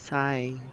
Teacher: this last sound is long and high